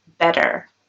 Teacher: so in american english it might sound more like a d